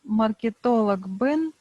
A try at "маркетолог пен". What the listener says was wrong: Во, маркетолог, ну а пен, а не бен. Да, хотя в русском языке г звучит звонко, но хакасское произношение оно оглушает этот звук. Маркетолог, поэтому пен.